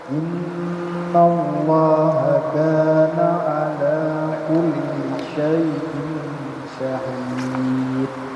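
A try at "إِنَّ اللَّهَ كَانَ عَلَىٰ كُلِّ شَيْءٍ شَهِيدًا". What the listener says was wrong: Syahida. Jadi danya panjang ya.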